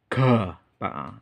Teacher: Kalau ini ga yang biasa. Kalau ga itu berarti pakai hembusan napas, itu istilahnya mahaprana ya, pakai napas besar. Kalau saya nyebutnya pakai abab ya, jadi ga, hurufnya seperti ini ya, hurufnya seperti ini, jadi ga.